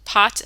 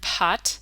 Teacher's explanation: that I puffed a little bit more air than usual but in Korean these two sounds the p and the extra air P sound are actually completely different phonemes